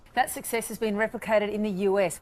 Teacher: le deuxième syllabe, c'est l'accent tonique, success.